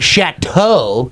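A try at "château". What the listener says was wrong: You pronounce the T twice. It's chateau. Chateau.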